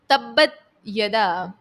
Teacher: با جو ہے مشدد ہے، حرف قلقلہ کا با ہے، تو با میں خوب جماؤں کے ساتھ اس کو ادا کریں گے۔ اور یدا ابی، یہاں پر دیکھیں حمزہ ہے، حمزہ کے بعد ایک اور حمزہ ہے، مد منفصل کا قاعدہ ہے۔